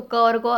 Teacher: तो यहाँ पर जो अल्प प्राण के वर्ण यहाँ पर हैं वो हैं क और ग, ठीक है, पहले से क और थर्ड कॉलम से ग, तो क और ग अल्प प्राण में आ जाएंगे